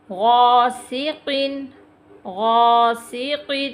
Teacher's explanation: غین موٹا، قاف پھر موٹا ہے، غاسق، یہ تنوین آ گئی ہے، ہم نے پڑھ لیا تنوین کے بعد حروف حلقی میں سے کوئی حرف آ جائے تو وہاں پہ ہم غنہ نہیں کریں گے۔